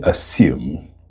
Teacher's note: the s in the spelling of this word is the voiceless fricative. So you say assume.